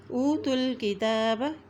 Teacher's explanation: فریق من الذین اوتوا الکتاب، تا کی پیش کو لام کے ساتھ ملائیں گے، لام کے اوپر شد ہے اور تا کے اوپر کھڑی زبر ہے، اس لیے تا کو ہم ایک حرکت لمبا ادا کریں گے